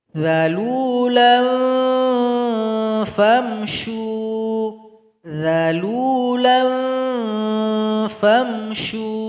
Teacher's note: Huruf fa tempat keluarnya ujung gigi seri paling atas. Tempelkan ke bibir bawah. Jadi ikhfanya mengarah ke situ. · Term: ikhfa awsat